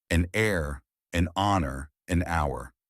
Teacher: In these cases, the H is silent. So the words begin with vowel sounds and an is used.